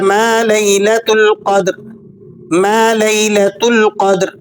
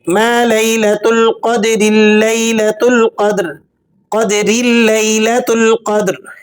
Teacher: क़द्र वक्फ़ करेंगे तो रॉ को मोटा पढ़ेंगे, और अगर आप मिलाकर पढ़ेंगे तो रॉ बारीक पढ़ी जाएगी।